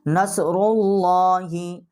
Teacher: اور صاد جو ہے اس کے اوپر جزم ہے، اور را کے اوپر جو ہے یہ پیش ہے۔ آگے جو لام ہے ہماری اللہ کی، اس کو ہم موٹا کر کے پڑھیں گے